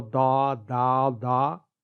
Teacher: ضاد ادا کرتے وقت جو کوئی بھی منہ کے اس سامنے کے حصے پر دباؤ ڈالے گا اور وہ دا دا دا کی آواز نکالے گا، یہ سوچ کر کے کہ وہ ضاد کی آواز نکال رہا ہے، لیکن حقیقت یہ ہے کہ وہ ضاد کی نہیں بلکہ دال مفخمہ یعنی پر دال یعنی ہیوی دال کی آواز نکال رہا ہے